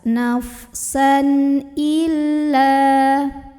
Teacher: La mad tabi'i karena ada alif yang sebelumnya didahului huruf berbaris fathah, maka lamnya ini kita panjangkan 2 harokat saja.